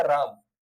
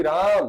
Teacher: प्लुत जिसमें दीर्घ से भी ज्यादा मात्रा है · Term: प्लुत स्वर